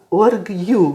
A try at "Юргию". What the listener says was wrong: Не, вот это вот У с мягким знаком, это читается как немецкое сумляутом. А ты помнишь, ну как вот на немецком, например, Мюллер, Мюнхен, знаешь, как Мюнхен, да? Вот, и здесь будет Юргию.